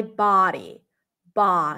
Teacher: that's my body ba so the tongue pulls back it is it feels like a rounded sound because the sound resonates in the back